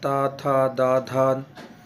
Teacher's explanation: दंत में दांतों के मूल से बोला जाता है